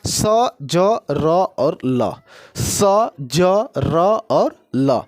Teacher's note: जब हम लोग इनको पढ़ेंगे तो पूरा दांत में भी स्पर्श नहीं होगा और पूरा तालु में भी स्पर्श नहीं होगा, यानी कि दांतों के जस्ट ऊपरी मूल से जो स्पर्श होने से बनता है उसे वर्तस्य बोलते हैं